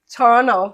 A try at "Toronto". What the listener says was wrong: Toronto. No, the second T is silent, it's Toronto.